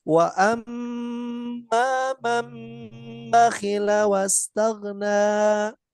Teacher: harusnya dibaca gunah dua harakat